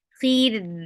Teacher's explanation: ra will be light because there is kasra before it. Khir, and give the wasut too because you are giving sakun.